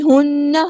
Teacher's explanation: نون پہ غنہ زمانی ہو رہا ہے، 2 کاؤنٹس رکنا ہے۔